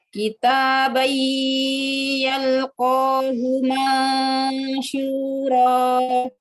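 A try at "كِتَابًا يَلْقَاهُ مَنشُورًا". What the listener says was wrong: Belum masuk ya ke hidung. Ayo, ini belum nih, belum ada gunah nih. Masih cuma masuk doang, masih tasydid doang, masih idgham aja.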